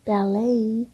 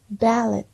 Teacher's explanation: 강세가 어디에 있냐? 강세의 위치의 차이예요. 1번은 뒤에 있어요. 그래서 발레이 하시고 두 번째 거는 앞에 있어요.